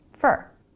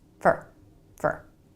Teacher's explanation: Americans pronounce it fur. Really fast with a reduced vowel, fur, fur. So if you're expecting to hear for, fully pronounced and clear, then you're never going to hear fur.